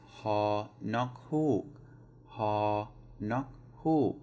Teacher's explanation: So ha nok, high, and then falling